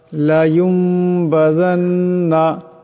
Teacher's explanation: লায়ুমবাযান্না, এখানে দেখেন নুন সাকিন, নুন সাকিনের পর বা আসছে, গতিকে এই নুন সাকিনকে মিম দিয়া বদলায় পড়তে হবে। এটাকে কলব বলা হয়।